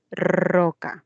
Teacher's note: fonológicamente es la vibrante múltiple